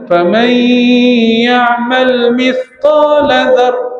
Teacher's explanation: Bunyi mai tu lebih dengung lebih panjang banding dengan qala.